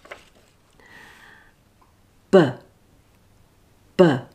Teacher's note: notice how there's less air being forced through that's because voiced consonants have a weaker force of exhalation